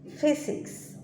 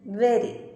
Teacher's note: The lower lip and the upper front teeth are the articulators for labiodental sounds. The lower lip is the active articulator and it moves towards upper front teeth, the passive articulator.